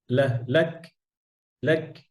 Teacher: আহলাক, লাক, এটা ي- يقول أهلكت مالا لبدا শক্ত জায়গায়। হ্যাঁ, কাফ কোথায়? শক্ত জায়গায়, উপরে, জিহ্বার গোড়া উপরে শক্ত জায়গায়।